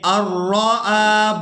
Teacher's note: ہم حمزہ کو را مشدد کے ساتھ ملائیں گے